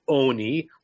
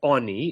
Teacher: So the noun is oni, long o, but because of the way this word is structured, it gets shortened to a soft o